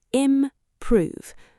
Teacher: The stress is on the second syllable.